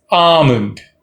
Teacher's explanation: almonds not al ones it's almonds um almonds stress on ah l is not pronounced here